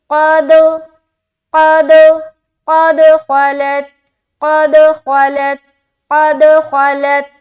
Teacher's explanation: کیوں؟ کیونکہ دال کے اوپر سکون ہے اور دال حروف قلقلہ میں سے ایک ہے، لہٰذا ہماری آواز ٹکرا کر ڈبل ساؤنڈ معلوم ہوگا